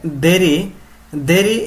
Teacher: দেরি এর দ হচ্ছে দন্ত আর র হচ্ছে কি বলতো দন্ত দন্ত আর র হচ্ছে কি